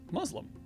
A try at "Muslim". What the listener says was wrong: Muslim. Muslim. No Z. Muslim.